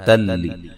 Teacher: नून तनवीन का इदगाम बिला गुन्ना है, गुन्ना नहीं करेंगे